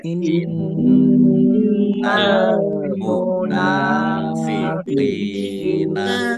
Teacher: nun tasdid dibaca gunah atau mendengung, ya, ditahan biar tampak dengungannya